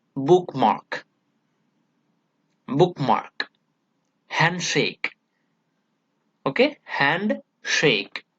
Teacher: syllables are given importance both the syllables are stress syllable okay we stress on both two syllables · both the syllables are given importance both the syllables are stress syllable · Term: pondi